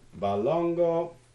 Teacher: this is a low, high, high word, balongo